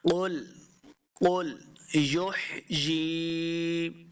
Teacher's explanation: قل یحییہا الذی، قل قاف کو موٹا پڑھیں گے، قل آگے لام کے ساتھ اس کو ملانا ہے اور لام کے اوپر ہم نے جھٹکا نہیں دینا، اس کو قلقلہ نہیں کرنا، لام حروف قلقلہ سے نہیں ہے تو اس کو سمپل پڑھنا ہے۔